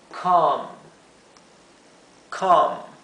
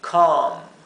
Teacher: Lo he escrito así, C-A-A-M para la fonética, pero no es, suena entre una A y una O, y es un sonido largo, extendido